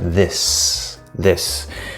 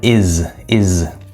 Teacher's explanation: this last s at the end of a word is voiced most of the time